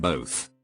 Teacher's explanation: I hear people pronounce an invisible l in the word both sounding the front of the word more like Bol and boat